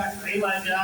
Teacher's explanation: عوجا، 2 زبر ہے، لیکن ہم کیفیت سے روک رہے ہیں، اس 2 زبر کو ہم نے 1 زبر کر دیا